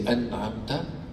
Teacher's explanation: Even in this, there is a غنة that is very light. Light غنة, light nasal sound that's coming out of the nasal cavity.